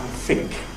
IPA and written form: fɪŋk (think)